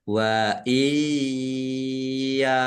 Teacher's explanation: Nun sukun bertemu dengan huruf ya, bacaan idgham bi gunnah. Masuk dengan mendengung, langsung masuk ke huruf ya, dibaca mendengung, ditahan biar tampak mendengungnya.